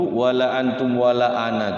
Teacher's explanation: ananya itu tidak boleh dua harakat walaupun tulisannya ada alifnya